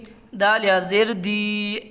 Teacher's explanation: یا ساکن سے پہلے زیر ہے، زیر کو تھوڑا کھینچ کر پڑھیں، معروف پڑھیں، مجہول آواز سے بچیں۔